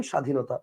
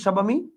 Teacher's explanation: ব ফলা আছে কিন্তু বফলার উচ্চারণটা আপনি করতেছেন না